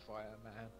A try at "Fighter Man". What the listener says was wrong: It's Fighter Man, not Fireman. He's not even fire attributes. Learn to enunciate the T.